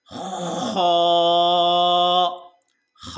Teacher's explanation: खा को हम गले के आखरी हिस्से से पढ़ते हैं